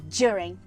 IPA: djʊərɪŋ